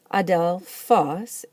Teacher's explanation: Adelphos is the word for brother, and it likes to be accented on the last syllable.